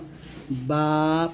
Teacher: এই বা টা আমরা দুই ঠোঁটের ভেজা অংশ থেকে মিলাবো